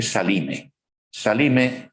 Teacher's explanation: lo que se hizo en romance fue Generalmente intercalar una vocal intercalar una vocal entre la L y la m